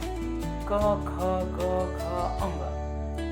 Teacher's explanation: इन्हें कंठ्याः भी कहते हैं क्योंकि इनका उच्चारण कंठ से किया जाता है